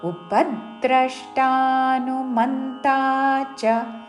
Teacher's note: ఈ పదంలో ప మీద ద్ర మీద మ మీద ఆఘాత పలుకుతూ